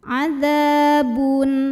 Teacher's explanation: Dza mad tabi'i karena ada alif yang didahului baris fathah. Maka cara bacanya dipanjangkan dzalnya 2 harokat.